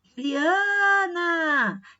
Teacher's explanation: Eu alongo mais esse A. Então, isso significa que essa sílaba é tônica. A sílaba mais forte vai ser essa que a gente vai alongar um pouco mais, tá? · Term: sílaba tônica